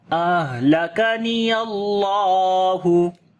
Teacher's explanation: So in the name of Allah there is heavy sound, because before the name of Allah there is fatha.